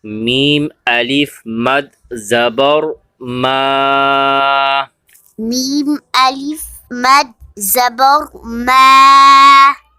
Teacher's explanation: میم کے بعد دیکھیں الف ہے اور الف کے اوپر مد ہے. اسے ایک 3 الف کی مقدار کھینچ کے پڑھیں گے. میم الف مد زبر ما.